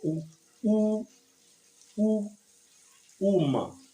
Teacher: The lips, watch my lips, they are protruding forward for U